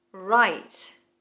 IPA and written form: raɪt (Write)